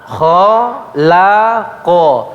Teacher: Jangan sampai la-nya dibaca tebal. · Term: tipis